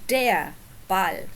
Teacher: notice that you don't really hear the r at the end of dare we don't say dare or Dare in a way we do